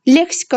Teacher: Leksika sözündə vurğu birinci hecəyə düşür.